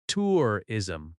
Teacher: Tourism has stress on the first syllable.